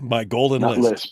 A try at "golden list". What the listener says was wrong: Not lisp. List.